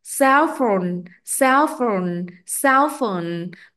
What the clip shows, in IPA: ˈsɛlfəʊn